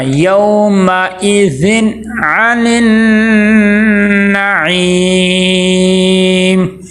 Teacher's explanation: یہاں پہ حمزہ کو عین نہیں بنانا